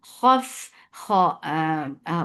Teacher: make kha heavy with infitah, and for fatha upon jaws attached fa will get sifa of raqawa.